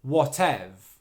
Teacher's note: technically speaking the v sound is on the end of the stressed syllable whatev okay and then that final syllable is just the schwa